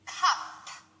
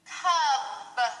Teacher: you have to make sure that your p is voiceless and your B is voiced